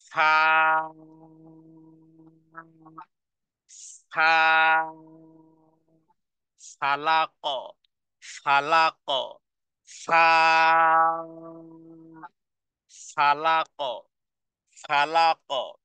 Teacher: নিচে ঠোঁটের পেট, সামনের উপরের 2 দাঁতে আগার সাথে আগে নিচের ঠোঁটের পেটকে লাগান। নিচের ঠোঁটের পেট সামনের 2 দাঁতের সাথে ফিট করে দেন। এরপরে বাতাস বের হবে, আওয়াজ বের হবে।